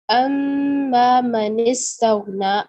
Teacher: جب میم کے اوپر شاد آ جاتی ہے تو وہ ہیویسٹ گنہ بن جاتا ہے